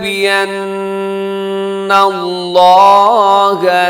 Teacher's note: نون مشدد غنہ اور لفظ اللہ موٹا کیونکہ اس سے پہلے زبر